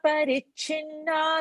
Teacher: Cha mahaprana has to be specifically said. Because cha half is also there, so we'll tend to say chinna, so it won't be correct sound.